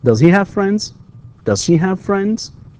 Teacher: yes/no questions here you have rising intonation